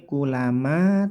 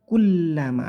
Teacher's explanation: di sini ada lam yang bertasydid, baca lamnya ditekan, kullama, tidak boleh kulama tapi kullama, ada penekanan di huruf lam.